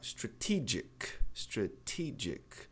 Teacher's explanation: A tônica é a sílaba do TE. Então, se ela é a tônica, não mexa nela. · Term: sílaba forte